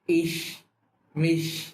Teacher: ইস, মিশ বলার সময় যাতে হচ্ছে আমার জিহ্বার অগ্রভাগ সামনের দিকে থাকে